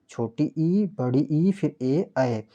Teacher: जीभ के अगले हिस्से से बोले जाने वाले स्वर को अग्रीय स्वर कहते हैं। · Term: अग्रस्वर